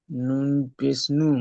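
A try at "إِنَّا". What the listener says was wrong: নুন আলিফ জাবার না, এখানে নুনের পরে আলিফ এসছে, তাহলে হামজা নুন জের ইন, নুন আলিফ জাবার না, ইন্না, ইন্না।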